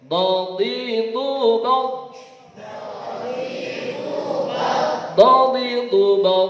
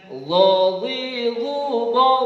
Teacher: Keduanya sama punya sifat istila, pangkal lidah terangkat. Tetapi yang punya sifat istiqalah itu hanya huruf dad. · Dad punya sifat istitalah, suaranya ya memanjang dari pangkal lidah ke depan ujung. Ya, kalau dha biasa saja pangkal lidah terangkat, kemudian suaranya tidak sampai memanjang dari pangkal lidah ke ujung.